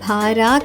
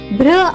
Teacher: మరియు ఆ రెండు అక్షరాల శబ్దాన్ని సంయుక్త పద్ధతిలో తీసుకోబోతున్నాం. గమనించండి బిఆర్ యొక్క శబ్దం భార కాకుండా బ్ర అవుతుంది